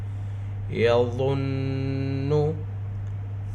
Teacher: ضا حروف مستعلیہ میں سے ہے اور ضا نرم حروف میں سے ہے. ضا کو نرمی کے ساتھ ادا کریں گے، زبان دونوں دانتوں کے درمیان میں رہے گی اور اوپر کے دانتوں کو ٹچ کرے گی